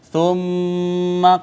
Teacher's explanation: میم مشدد پہ ہم نے غنہ کیا